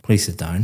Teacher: please sit down, very flat intonation going down